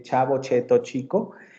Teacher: Va a haber sonidos prepalatales, va a haber sonidos palatales puros, como por ejemplo nuestra che, la che de chavo, cheto, chico. Ese fonema se produce justamente en la zona media del paladar, en la parte más dura del paladar.